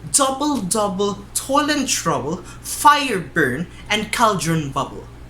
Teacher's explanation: we call the troche or the trochaic foot a strong syllable a strong syllable followed by a weak syllable